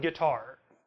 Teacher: the initial part, g, is weaker than the follow-up, tar. It's a weak, strong rhythm. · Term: iamb